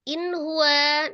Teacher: Huruf ha adalah salah satu huruf yang keluar dari al-halqi atau tenggorokan, tepatnya tenggorokan bagian bawah. Nun sukun ketemu hanya jadi namanya izhar halqi dibaca dengan jelas.